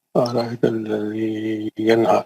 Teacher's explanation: ینہا میں نون ساکن کا اظہار حلقی